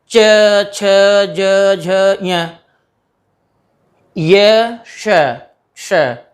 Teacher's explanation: इन ध्वनियों के उच्चारण में जिह्वा का स्पर्श तालु से हो रहा है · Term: तालव्य ध्वनियाँ